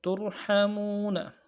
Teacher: ساکن کریں گے، ترحمون، وقف کی صورت میں ترحمون، لعلکم ترحمون، بغیر وقف کرتے ہوئے نون کو زبر کے ساتھ پڑھیں گے